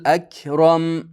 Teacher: Rom, ro yo'g'on, mimni sukuni bilan o'qiymiz.